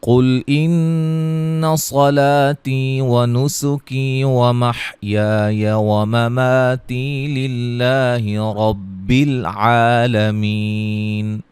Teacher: قاف کو موٹا، نون مشدد پہ غنہ، صاد کو موٹا